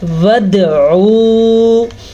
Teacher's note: دال کے اوپر کلکلا ہو رہا ہے